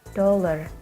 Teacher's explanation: The D sound is called voiced alveolar stop from the word dollar.